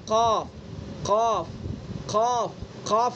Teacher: لہویہ، یہ ان کے نام ہو گئے۔ زبان کی جڑ اور اس کے مقابل اوپر کا تالو، اس سے قاف قاف قاف قاف نکلتا ہے